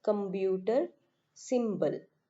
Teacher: the P sound in computer and simple is replaced by the sound B